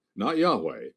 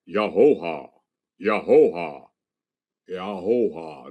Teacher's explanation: Notice, no consonants. You can say it without closing your oral passage.